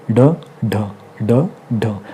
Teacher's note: जीभ के झटके से उच्चारण होता है। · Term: उत्क्षिप्त व्यंजन